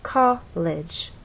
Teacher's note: Flutes had one syllable, so our voice glided down. With college, two syllables, our voice sort of steps down. College, from one level to the next, from a higher level to a lower level.